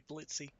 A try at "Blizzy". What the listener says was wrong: It's Blizzy. There's no T.